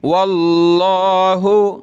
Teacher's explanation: लफ्ज़ अल्लाह से पहले वाव पर ज़बर है तो मोटा करेंगे